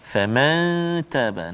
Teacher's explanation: Faman taba, nun mati bertemu dengan ta, dengung dua harakat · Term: ikhfa hakiki